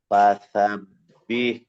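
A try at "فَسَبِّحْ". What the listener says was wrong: সিন প্রথমে ঠিক ছিল, সিনটা এবার একটু অন্যরকম হয়ে গেছে আবার।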